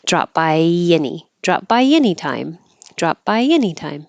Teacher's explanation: there drop by drop by Y when you say by by your tongue goes very high and then any starts lower so you let your tongue slide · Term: invisible y